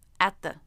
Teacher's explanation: It never went to the roof of the mouth, the position of T. When I bring my tongue through the teeth, I'm in position for the TH, but I stop the air. So I'm ready to go for the TH as I'm making the stop T.